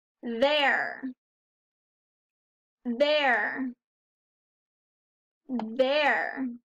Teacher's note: We hear the R at the end, there, the air.